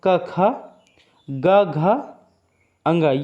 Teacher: कंठ ध्वनियाँ हैं जो कंठ से निकलती हैं